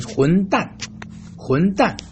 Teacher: fourth tone is something very abrupt and short. When you are very upset, you end your statement very abruptly.